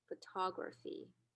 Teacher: But if you compare these two syllables, you can clearly hear that ta is more pronounced compared to fi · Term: prominent stress